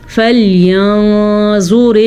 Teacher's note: میں نے را باریک پڑھی ہے کیونکہ را کے نیچے زیر ہے. جب را کے نیچے زیر ہو تو یہ یاد رکھے را باریک پڑھی جاتی ہے, جب را کے اوپر زبر یا پیش ہو تو را پر پڑھی جاتی ہے.